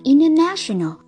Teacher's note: Các bạn thấy ở đây NT đứng giữa I và E nên chính vì thế T câm, chúng ta đọc là international.